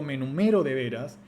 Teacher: el pico tonal cae sobre la sílaba siguiente · todos ustedes notan que la sílaba acentuada es me, a pesar de que el pico tonal, en términos fonéticos, cae sobre ro. Bien. Por eso definimos el acento en términos casi cuasi perceptuales, el cual se percibe como más prominente y no se define en términos de dónde cae el pico tonal.